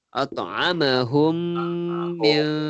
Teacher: hukum dia idgham mislain, memasukkan mim pertama ke dalam mim yang kedua.